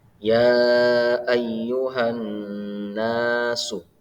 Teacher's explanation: Nah, di kalimat ya ayyuhan nasu ada huruf nun yang bertasydid, maka cara membacanya adalah dengan dengung dan ditahan sebanyak 2 harokat